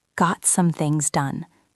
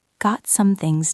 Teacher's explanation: The T in got is often very soft, almost disappearing.